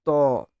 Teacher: জীভের সামনেটা উপরের দাঁতকে স্পর্শ করে উচ্চারিত হয় তাদেরকে আমরা দন্ত ব্যঞ্জন বলে দেই · জীভের ডগটা উপরের দাঁতটাতে ছোয়াচ্ছে